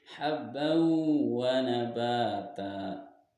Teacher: Nah, idgham bi gunnah karena huruf ba di sini berharokat fathah tanwin bertemu dengan huruf waw, maka masuk dengan dengung dan ditahan sampai dua harokat